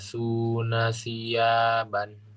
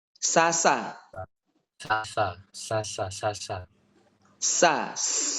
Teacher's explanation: kalau Sin itu tidak keluar ujung lidahnya